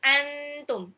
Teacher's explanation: Jadi antum, bukan angtum atau antum, salah. Antum ditahan, nun sukun hampir lompat mau ke ta. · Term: ikhfa